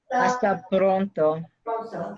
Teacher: I heard the trilled R there.